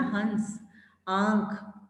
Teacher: जब अनुनासिक का उच्चारण सभी स्वरों के साथ होता है, इसका चिन्ह चांद बिंदु है। इसका उच्चारण करते समय नाक तथा मुंह से हवा बाहर निकलती है। जब उच्चारण करते समय नाक और मुंह से हवा बाहर निकल रही हो तो नाक से आवाज आएगी।